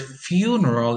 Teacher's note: the word funeral is stressed on the first syllable